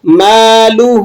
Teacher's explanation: میم کو 1 الف کے برابر کھینچ لیں گے اور ہا پر الٹا پیش ہے 1 الف کے برابر لمبا کر کے ادا کریں گے۔